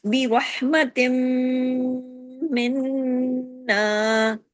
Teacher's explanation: نون مشدد میم مشدد بڑے غنہ کے ساتھ ادا ہوتا ہے